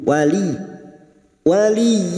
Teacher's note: masuk pada huruf ya yang bertasjid hanya masuk tanpa ditahan tanpa mendengung